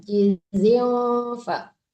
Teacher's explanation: Dengung ya, jizil jangan ditekankan nun ya, tapi disamarkan kefa